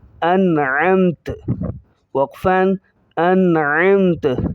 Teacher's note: تا کی زبر کو ظاہر نہیں کریں گے جب ہم رکیں گے